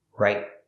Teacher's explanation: The T in right is a stop T. It's at the end of the word.